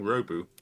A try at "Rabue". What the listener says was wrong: You put an accent on it. It's Rabue.